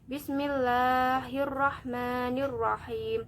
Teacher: lafadz Allah ar-rahman dan ar-rahim cukup dibaca Dua harokat bentuk kesalahannya ialah membacanya kurang dari dua harakat atau lebih dua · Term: Mad Thobi'i